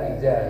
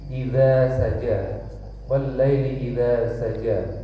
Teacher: Idza lidahnya itu dikeluarkan sedikit di antara gigi.